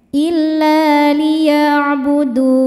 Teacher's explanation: Kemudian huruf yang disukunkannya adalah huruf nun. Maka huruf dalnya ini panjang. Boleh dua atau empat atau enam harakat asal konsisten dalam sekali baca. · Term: mad arid lisukun